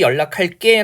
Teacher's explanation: 이런 거 다시 연락할게 라고 해서 된소리로 발음하지만 원래 형태는 예사소리로 고정되어 있는 겁니다